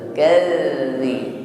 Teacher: Wadharni wal mukadzib, dzal tasydid di sini ditekan membacanya, ya. Tempelkan saja ujung lidah bertemu ujung gigi sari atas. Kadzi, tidak berdesis.